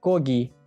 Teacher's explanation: So'z boshida K, so'z o'rtasida esa, ya'ni ikkita unlining o'rtasida G bo'lib o'qilmoqda. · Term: KG harfi